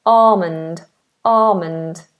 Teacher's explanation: the British English pronunciation of this word makes this L silent we just have a long r at the beginning